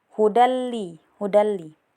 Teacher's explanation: tanwin bertemu dengan lam jadi dibaca lebur tanpa dengung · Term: idgam bila guna